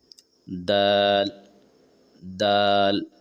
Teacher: दाल बोलते समय आप देखेंगे कि आपके जबान का जो नोक है ऊपर के दांतों के जड़ से लगेगा।